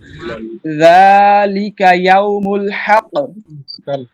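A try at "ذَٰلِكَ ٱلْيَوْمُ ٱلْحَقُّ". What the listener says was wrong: জালিকা না জালিকাল।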